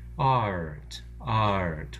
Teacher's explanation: We make the sound of two vowels. It actually forms a kind of diphthong between the initial ah, like father, and the er, the R-colored schwa, before the T,